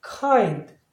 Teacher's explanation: N하고 D가 있을 때 D 발음은 거의 안 합니다. 그래서 kind 이렇게 하죠. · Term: 자음 생략